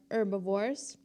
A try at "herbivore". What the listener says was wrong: You said, herbivore. You're like, herbivore. There was like a little dip there.